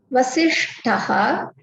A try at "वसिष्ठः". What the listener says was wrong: Vasishtaha. Tha, not ta. Vasishtaha.